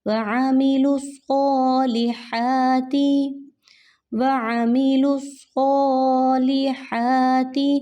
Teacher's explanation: عین کو آپ نے حلق میں سے نکالنا ہے، وآ کر کے نہیں پڑھنا، اگر آپ وآ کر کے پڑھتے ہیں تو وہ حمزہ کی آواز ہو جائے گی۔